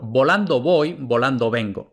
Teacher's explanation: El primer volando, como va detrás de pausa, entonces es B oclusiva. Luego, voy, como no va detrás de pausa, entonces es aproximante.